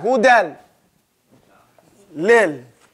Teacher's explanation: another point is that now there is no ghunna.